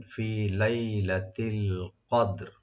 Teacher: রা সাকিন হয়ে যাবে ওয়াকফের কারণে, দাল তেমনি সাকিন আছে। তো দাল একটু হালকা কলকলা করে রাটাও একটু সাকিন করবেন